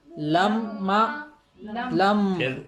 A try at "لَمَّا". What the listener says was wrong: پھر نون کی آواز آئی. لما نہیں لما.